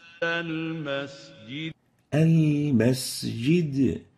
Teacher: المسجد Al-masjid. So we have to properly give the sin its whistle characteristic